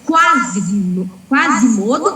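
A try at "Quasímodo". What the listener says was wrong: Quasimodo. O acento é no I, Quasimodo. proparoxítono. Quasimodo.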